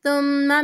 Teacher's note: ثُمَّ مِن مشدد غنہ کریں گے